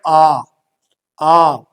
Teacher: आ जब हम बोलते हैं आ, तो इस यहां पर हमारा जो मुंह है ये पूरा खुलता है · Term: विवृत स्वर